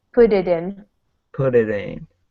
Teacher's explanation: these T's are like D's